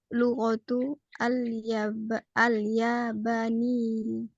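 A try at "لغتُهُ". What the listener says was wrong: Hu-nya dibaca. Lughatuhu.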